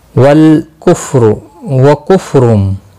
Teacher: را دو پیش کی وجہ سے پر پڑھا جائے گا